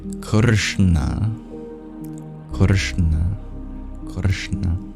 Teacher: for a good three fifths of this word the middle three sounds we make in the same place of articulation we curl our tongue back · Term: retroflex